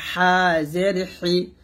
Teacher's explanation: এই হাটার চাপ দিয়ে বলবো কণ্ঠনালীর মাঝখান থেকে হাজের হি